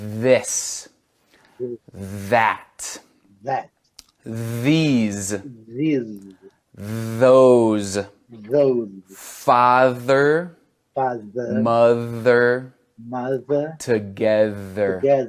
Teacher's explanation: Tá sentindo a vibração na garganta agora, com esse TH vozeado? E se você coloca o dorso da mão na frente da boca mais uma vez, você vai sentir ar saindo pelas laterais, mas um pouco menos do que o TH não vozeado.